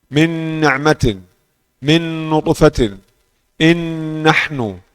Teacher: Nun yang idgham kamil, nun masuk dalam nun dan nun masuk dalam mim.